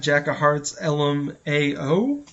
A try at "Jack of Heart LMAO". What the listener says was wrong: It's actually Jack of Heart LMAO. You said Jack of Hearts, so the S is not there.